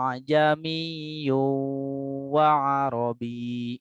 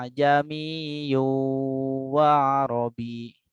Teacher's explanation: ada tanwin menghadapi waw ya. Terjadi idgham, idgham dengan disertai dengung, gunnah. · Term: idgham bi gunnah